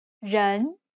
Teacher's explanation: The second tone is the rising tone.